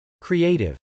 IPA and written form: kriˈeɪtɪv (creative)